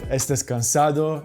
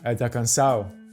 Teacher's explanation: Aspirated or dropped final S